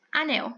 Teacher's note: A sílaba mais forte da palavra anel? É nel, certo? Então, ela é uma oxítona, é uma palavra oxítona, porque a sílaba mais forte é a última.